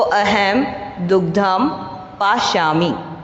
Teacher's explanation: अनुस्वार है तो हमारे यहाँ पे उच्चारण क्या हो जाएगा, इसका म का उच्चारण आएगा